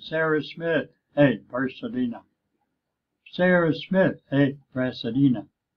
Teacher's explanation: mind or in English it is not an important word but Sarah Smith is and Pasadena is and so we say it louder and we say it longer